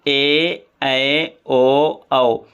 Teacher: ए ऐ ओ औ यह स्वर हमेशा बड़े ही होते हैं इनको देर तक ही बोला जाता है